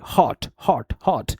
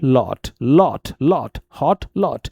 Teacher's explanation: British vowel में जो ओ sound होता है शॉर्ट और राउंडेड होता है